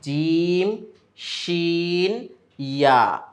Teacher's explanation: ৬ নম্বর মাখরাজ, এটাও জিহ্বার অংশের মধ্যেই অন্তর্ভুক্ত, যে জিহ্বার মধ্যখান তার বরাবর উপরে তালুর সঙ্গে লাগিয়ে উচ্চারিত হয় ৩টি হরফ